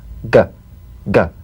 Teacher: the back of the mouth without tightening pressing or pushing gah you'll feel a crisp tap and a voiced pulsation of the back of the tongue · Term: voiced tongue back plosive consonant